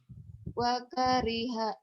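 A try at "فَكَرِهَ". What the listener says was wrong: Wakariha. Fakariha. Kedengarannya kayak wak.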